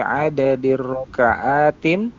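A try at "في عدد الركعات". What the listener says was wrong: Fi adadi rakaat jangan ditanwin ya tadi. Rakaati jangan tin. Ada alif lam.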